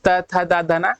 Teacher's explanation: जीभ हमारे दांतों को छू रही, दंत हो गया।